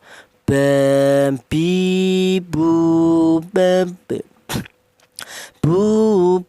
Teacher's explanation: huruf berasal dari kedua bibir yang rapat ya. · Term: huruf ba